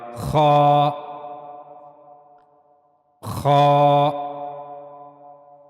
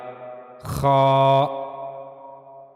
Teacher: گلے کا اوپر والا حصہ یعنی جو منہ کی طرف والا حصہ ہے گلے کا، وہاں سے خا کو ادا کیا جائے گا، خا خا۔ یہاں تصویر میں اس کو واضح کیا ہے کہ یہ گلے کا اوپر والا حصہ ہے، یہاں سے خا کو ادا کیا جائے گا، خا۔